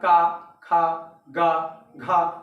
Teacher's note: का वर्ग जो है दोस्तों, यह कंठ से निकलता है, कंठ। ठीक है, या इसी को कहते हैं कांठ।